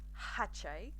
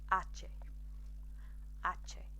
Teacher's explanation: the H, like in French and some other Latin-based languages, the H is silent